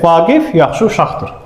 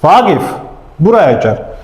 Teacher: əgər mən bir sözü xitab elədimsə, vurğu qaçır əvvələ. Ən azı bir heca əvvələ gəlir.